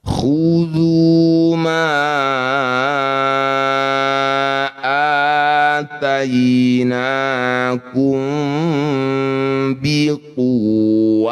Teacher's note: Ma panjangkan 5 harokat atau 5 ketukan · disebut bacaan namanya mad jajaiz munfasil ma panjangkan lima harakat atau lima ketukan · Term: mad jaiz munfasil